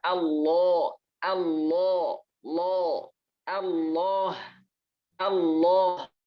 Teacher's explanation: Lafaz Allah itu ketika sebelumnya ada huruf yang berharokat fathah atau dhammah, maka Allahnya itu tebal. Lamnya ini jadi tebal. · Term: Lafzul jalalah